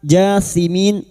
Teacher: Alif kecil di atas ja kita panjangkan dua harakat.